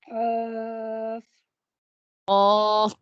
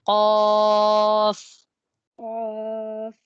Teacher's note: الف کو نہیں باریک نہیں کرنا، الف کو بھی موٹا رکھنا ہے. قاف، آخر تک موٹا ہوگا یہ.